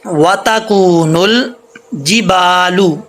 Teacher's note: یہ دیکھیں با کے آگے الف ہے، با الف زبر با، یہ جیم ہے، جیم سے جی با الف زبر با، جِبَالُ، نون کو لام سے کنیکٹ کریں گے، الف گر جائے گا۔